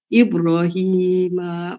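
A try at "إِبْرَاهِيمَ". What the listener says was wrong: ইব্রাহিম রতে মাদ আছে, ইব্রাহিম।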